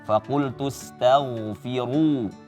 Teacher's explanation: Tipiskan tanya, ginnya ditebalkan, dialirkan suaranya.